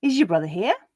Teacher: The z on is becomes j when read next to the y in your.